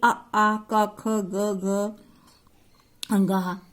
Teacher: ये सब कंठ से बोले जाते हैं, इनको कंठ कहते हैं।